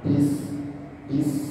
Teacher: ketika Ba Enggak ada angin ketika Sin harus ada angin bis bis Nah ya dan dia harus tipis ya tipis nah